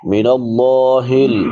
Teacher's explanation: لفظ اللہ کے آخر میں بڑی ہا ہے جو حلق کے آخری حصے سے ادا ہوتی ہے، جو سینے کے ساتھ ملا ہوا ہے، جس کو اقصی حلق کہتے ہیں۔